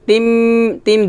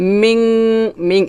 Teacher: তিম দুই ঠোঁট মিলে করে গুণ হবে, মিং নাকের ভিতর থেকে গুণাটা করতে হবে, জিব্বার আগা উপরের তালুতে লাগাবেন না।